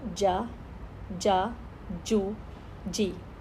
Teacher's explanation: اگر یہ اوپر ٹچ کرتی ہے جا جو جی جا جو جی اوپر ٹچ کیا ہے, اوپر والی داڑھوں کو بھی پیچھے سے ٹچ کر رہی ہے اور منہ کے اندر جو ابھار والی جگہ ہے جا, یہ دیکھیں اس کو کیسے کور کر رہی ہے جا جا جو جی ایک ہی جگہ پر, لیکن فرق کہاں رہا ہے ہونٹوں کی شیپ پر. جا پھیلے ہوئے, جو ہونٹ گولوں میں, جی ہونٹ اور زیادہ پھیل گئے اور اوپر ٹچ کر کے واپس آ گئے.